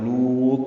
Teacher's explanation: لوط میں واو مدہ ہے اور تا ساکن ہے، اس پہ قلقلہ ہوگا. لوط تا پر پڑا جائے گا، ملا کر پڑھنا ہو تو اخفا ہوگا.